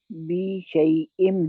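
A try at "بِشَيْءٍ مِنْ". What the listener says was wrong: बी को आके यज्म वाली या लगा रहे हैं आप,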